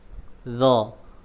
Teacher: Ujung lidah nempel di ujung gigi seri atas. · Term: huruf dha